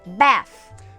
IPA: bæθ